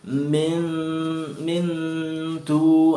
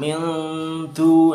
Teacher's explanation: pakai N tapi berdengung. Angnya sedikit di belakang. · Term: akrab